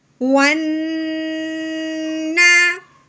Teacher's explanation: شد، تو یہ ہو گیا نون مشدد۔ پہلے واؤ نون کے ساتھ ملے گا شد کی وجہ سے، پھر شد کو 2 مرتبہ پڑھا جاتا ہے